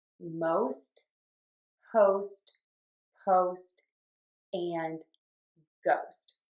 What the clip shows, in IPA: moʊst